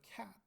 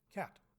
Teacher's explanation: released the t at the end of the word cat